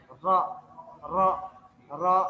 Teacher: bergetarnya ujung lidah ketika pengucapan huruf nya dengan getaran yang halus nah ini disebabkan sempitnya makhraj dan bertemu dengan Hai langit-langit langit-langit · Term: taqrir